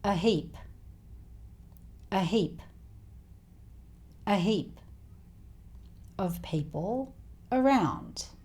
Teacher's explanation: The two As here are both schwa sounds.